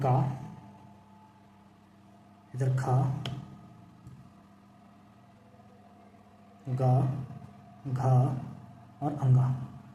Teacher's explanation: कंठ माने होता है गला। इसका उच्चारण स्थान गले से होता है। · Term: का वर्ग